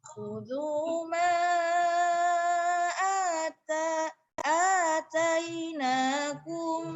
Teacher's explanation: Jangan lupa harus lebih panjang dari mad asli karena itu mad jaiz. 4 atau 5 harokat.